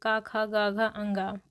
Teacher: पूरे वर्ग का उच्चारण कंठ से होता है